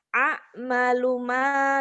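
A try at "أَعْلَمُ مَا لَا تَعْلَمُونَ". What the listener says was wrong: Terbalik, bukan amalu, alamu. A'lamu a'lamu ma la ta'lamun. A'lamu ma la ta'lamun.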